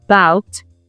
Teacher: But when we articulate the syllable bout we we can notice that the pitch of our voice rises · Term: strong syllables